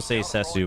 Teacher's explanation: The Japanese will say Sessu, but that's because they can't like end on a consonant. Their language doesn't end on a consonant, so.